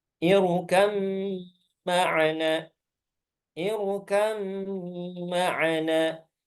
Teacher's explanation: Jadi hilang qalqalahnya. Kenapa? Karena diidghamkan ke huruf mim. Nah, inilah disebut dengan idgham. · Dan terakhir, ba ketemu dengan mim. Untuk ba ketemu dengan mim, maka ini diidghamkan, ya. Jadi dia dimasukkan ke mim.